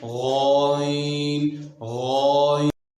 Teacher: غائن کے ادا کرتے وقت آواز اپنے مخرج میں ایسی قوت کے ساتھ ٹھہرتی ہے کہ اس کے اثر سے سانس بند ہو جاتا ہے اور آواز میں بلندی پائی جاتی ہے۔ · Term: جہر